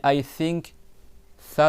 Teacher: Quand tu fais le tha, il y a l'air qui sort en même temps